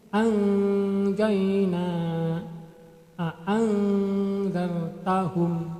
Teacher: Kita ulangi lagi pada ikhfanya, anjaina a'anzartahum. Jadi nun matinya itu dibaca samar-samar.